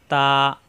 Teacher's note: তা জিহ্বার আগা উপরে দুই দাঁতের গোড়ায় লাগিয়ে ছেড়ে দিলে হয়ে যায় তা